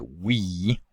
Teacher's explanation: the tongue has to move forward considerably to transition from the wa to the e · wa to the e the wa is somewhat distinct in that it has constriction at the velum and at the lips so we describe it with this composite labio-velar place of articulation